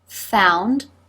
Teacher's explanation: you can see the tongue moving back as the lips come forward and round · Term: the ow as now D thong